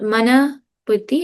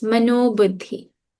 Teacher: The visarga, it's not mana buddhi, it's not manaha buddhi, it's mano buddhi when we put it together. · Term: visarga becomes an o